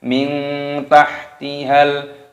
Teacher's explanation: nun sukun bertemu dengan ta, dibaca ikhfa, dibaca samar. Min itu namanya samar.